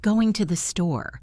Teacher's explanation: we say going to the store, and it sounds like one long word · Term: connected speech